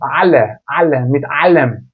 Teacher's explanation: Şimdi Almancadaki a harfi yüksek Almancada a ile ağzımızı açarak a ile ayın arasında bir ses çıkartır